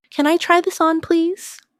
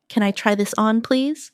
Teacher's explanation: Notice how try this on blends slightly. It makes your speech sound smoother.